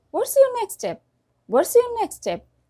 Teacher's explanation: the letter t or d of the first word has omitted or has gone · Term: reduction